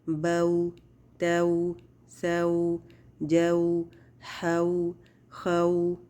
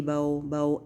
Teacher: वावलीन की अदायगी में भी होंठों को ज़बर की अदायगी के बाद बिल्कुल गोल कर देंगे